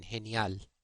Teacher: G before E and I is pronounced in Spanish as h, as in genial, or Jimena.